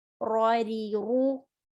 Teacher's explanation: ra heavy, ri light, ru heavy.